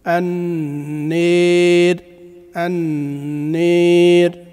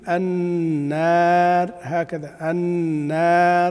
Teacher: طبعا هناك من يقرأ في التقليل النار هكذا النار، الألف مفتوحة، لا، الألف لابد أن تقلل فتحتها لأن هذا الأصل، والترقيق الراء هذا فرع